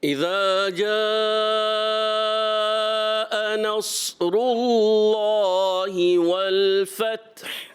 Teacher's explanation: یعنی تا کو ساکن رکھتے ہوئے اور پھر ہا کو بھی ساکن رکھنا ہے، تا کو ہلانا نہیں اور ہا کی ادائیگی بھی کلیئر کرنی ہے